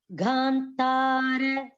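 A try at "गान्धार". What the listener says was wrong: No, Ga no. Ga is not having a red color. your Mahaprana should come where the red color is there. It's not Gha. Gandhara. Dhara.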